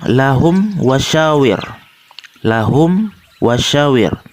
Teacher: lakum wa syawir lahum was aware hukum bacaannya adalah izhar syafawi sebab mim sukun bertemu huruf wow cara membacanya adalah suara mim sukun dibaca jelas